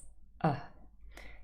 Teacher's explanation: this is a very special sound it's called the mid central vowel sound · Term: the schwa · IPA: /ə/